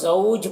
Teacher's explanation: جیم میں قلقلہ ہوگا، اور پھر یہاں پر مد لین عارض ہوگا، مد لین عارض کو ایک الف کے برابر کھینچ کر پڑھنا بہتر ہے۔